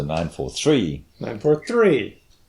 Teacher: put a big emphasis on the last word in the triple